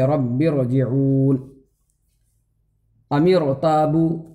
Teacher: را ساکن سے پہلے اگر زیر دوسرے کلمے میں ہے تو را پر پڑھی جائے گی